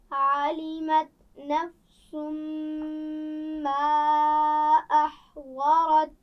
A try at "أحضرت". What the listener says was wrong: احضرت، ضاد موٹا پڑا جائے گا، ٹھیک ہے، اس کا خیال رکھیے.